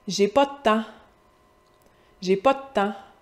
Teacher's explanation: J'ai pas de temps, le temps, avec un « en » ouvert.